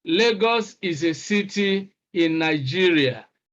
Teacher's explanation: this is a statement, for example, so we express this with a falling tone.